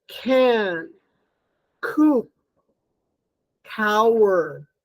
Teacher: It's also velar, and it's a plosive. So it's voiceless, aspirated, velar, plosive. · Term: k